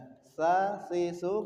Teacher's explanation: Nah, sifat yang sa harus ada hembusan udara. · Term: hames